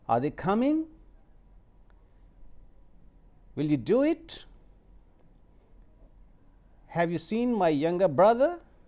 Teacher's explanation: So you see, you are going on rising tone, you are using rising tone when you finish your utterances